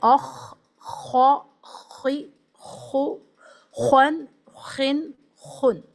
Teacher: جب آپ اس کو پڑھیں گے تو ایک آواز ہیوی سنائی دے گی، اور جو ٹنگ شیپ ہے وہ آرک شیپ یا سرکولر شیپ ہو جائے گا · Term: بولڈ لیٹر